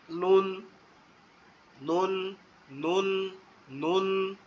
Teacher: জিহ্বার আগা শুধুমাত্র উপরের তালুর সাথে হালকা করে লাগবে